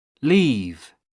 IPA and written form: liːv (leave)